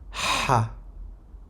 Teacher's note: Le Ha sort du fond de la gorge.